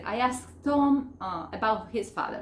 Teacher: en pasado tengo una S, una K, en el mismo verbo tengo 3 consonantes. Y esta ED que se pronuncia como T, se pronuncia en este verbo. Entonces, ¿qué voy a hacer acá? La K no se pronuncia.